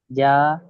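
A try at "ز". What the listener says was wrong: যা নয়, জ, ভালো করে মুখ খুলে পড়েন, মুখটা গোল হবে, জ,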